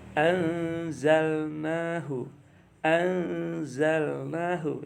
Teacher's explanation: Itu ada mendengungnya, itu nun sukun bertemu zai ya.